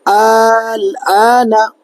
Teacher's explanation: تو یہ حرف مدہ کے بعد والا حرف پر جزم ہے تو یہاں پر مد لازم کا قاعدہ ہوگا، 4 الف کے برابر کھینچ کر پڑھیں گے